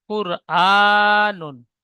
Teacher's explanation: হামজার উপরে খাড়া জাবার এসেছে খাড়া জাবার আলিফ মাদ্দার সমতুল্য সুতরাং খাড়া জাবারকে আলিফ মাদ্দার মতো একালি পরিমাণ টান দিয়ে পড়তে হয়